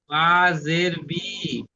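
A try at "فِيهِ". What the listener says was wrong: বাজের নয়, হাজের, ওটা বা নয়, ওটা হা। ফি,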